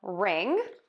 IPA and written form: rɪŋ (ring)